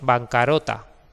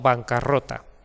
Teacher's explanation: esta R doble es necesaria para que se mantenga la sonoridad vibrante de la R cuando estamos diciendo la palabra rota pegada a banca. Si solo tuviera una R diríamos bancarota, pero no bancarrota.